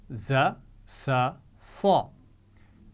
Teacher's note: یہ 3 آوازیں زبان کی نوک اور نیچے والے دانتوں سے لگا کر ادا کی جاتی ہیں۔ ان تینوں آوازوں میں سیٹی ہوتی ہے، زا، سا، صا۔